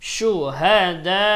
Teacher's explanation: শুহাদা চার আলিফ টানতে হবে